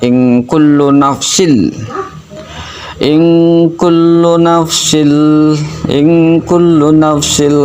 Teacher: Idgham itu artinya memasukkan atau melebur, bila ghunah tidak pakai ghunah. Jadi suara tanwinnya masuk ke huruf lam karena lebur ya, jadi masuk suara tanwinnya nggak ada, hilang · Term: idgham ila ghunah